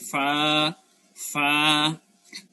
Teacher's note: নিচের টুটের পেটটা নিয়ে উপরের দাঁতে লাগায় একটা ফা বলেন